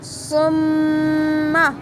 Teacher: میم کو تھوڑی دیر اس کا گننا کریں گے، ناک میں آواز ٹھہرائیں گے